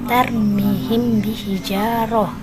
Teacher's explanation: Cara membaca hukum ikhfa syafawi yaitu harus dibaca samar-samar di antara 2 bibir dan dibunyikan dengan dengung